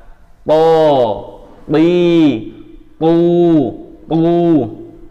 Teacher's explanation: Kemudian huruf to, ya, to ini kita belajar 4 huruf ini isti'la semua, ini harus tekan gitu, pangkal lidah bagian belakang itu harus dinaikkan, caranya menekan. To, nah, to makhrajnya di ujung lidah, ya, hampir kayak dal, tapi istilahnya dia mempunyai sifat isti'la sehingga harus dihentakkan lebih kuat dan juga lidahnya harus nempel ke atas. To, bi, tu, bukan tak ya.